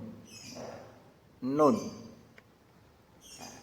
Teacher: ujung lidah mengenai gusi gigi seri pertama yang atas, menjadi makhrajnya huruf nun